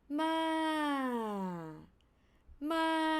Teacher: The falling tone would start from high pitch down to low pitch.